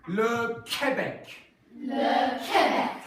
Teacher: in French there's no W coming off of it, it's just like a K, so it's just Le Québec.